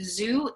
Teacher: the sound z like a zoo is a voiced sound